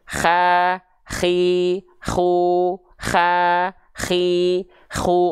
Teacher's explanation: ko itu dilafalkan dari tenggorokan juga tapi ujung tenggorokan tenggorokan paling luar atau paling atas k juga bahayanya dia punya sifat hams juga ya yaitu berupa · yaitu berupa nafas yang seperti mendengkur atau kayak ngorok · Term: huruf ko, huruf kho